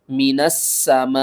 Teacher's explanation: او کا صیب، نون سین زبر نس، سین زبر سا، میم الف مد زبر ما، حمزہ زیر، من السماء، نون کو سین سے ملائیں گے، درمیان میں الف اور لام کو چھوڑ دیں گے، سین کو 2 بار پڑھیں گے اور سختی کے ساتھ پڑھیں گے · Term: مشدد